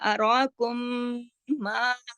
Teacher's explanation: ٹھیک ہے, ما اوپر مد ہے, راکم. اب دیکھیے میم ساکن کے بعد پھر میم شد کے ساتھ آیا مشدد, تو ادھر ادغام شفوی ہو گیا. اراکم ما پورا غنہ بھی ہوا اور پورا حق ادا کیا.